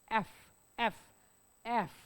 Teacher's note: हा खालचा ओट वरच्या दाताला लागला पाहिजे करून बघ एफ एफ एफ खालचा ओट एफ वरच्या दाताला काय